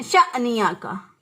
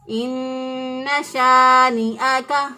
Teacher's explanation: بعض لوگ اس کو پڑھتے ہیں شأنیا کا، یہاں پر جھٹکا دیتے ہیں، اس کا مطلب کیا ہے، الف کو حمزہ سے بدل دیتے ہیں تو یہ غلط ہو جائے گا، جھٹکا نہیں دینا، اس کو آرام سے پڑھنا ہے، ایک الف کے برابر لمبا کرتے ہوئے پڑھنا ہے